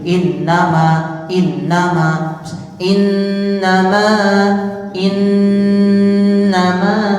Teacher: panjangnya kira-kira minimal dua harakat dan kita lebihkan satu itu jadi seperti itu ya untuk di mim dan Nun tasdid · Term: nun tasydid